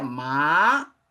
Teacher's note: Agora veja esse segundo tom, ele é um crescente. Ele é um crescente quando ele tem esse que seria o equivalente ao acento circunflexo para nós, né?